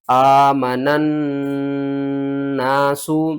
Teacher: نون کو ہم نے اس دوسری نون کے ساتھ ملانا ہے، درمیان میں الف اور لام جو ہے نا ان کو آپ نے چھوڑ دینا ہے